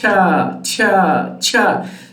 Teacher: The first sound is this sound here, ta, and then sha, cha, cha, cha. So in affricate sounds, it starts with the plosive sounds, ta, and ends with the fricative sound, sha.